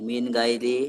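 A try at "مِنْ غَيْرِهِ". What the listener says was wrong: গাই হয়ে যাচ্ছে, গাই হবে না, গই। মিন গইরিহি।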